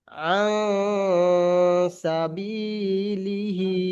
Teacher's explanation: তাহলে নুন জি সাকিন অথবা তানবিনের পরে হুরুফে ইকফার 15টি অক্ষর, অর্থাৎ এই অক্ষরগুলো যদি আসে, ঠিক আছে, নুন হুম, সাকিন অথবা তানবিনের পরে হুরুফে ইকফার এই 15টি অক্ষরের মধ্যে হতে যদি কোনো অক্ষর আসে, তাহলে নুন সাকিন কিংবা তানবিনের আওয়াজকে নাকের মধ্যে লুকিয়ে 1 আলিফ পরিমাণ গুন্নাহ করে পড়তে হবে